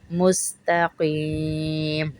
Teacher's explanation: تا کو پتلا پڑھیں گے اور قاف کو موٹا پڑھیں گے